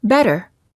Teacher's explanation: you quickly tap the tip of the tongue on the gum Ridge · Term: tapped T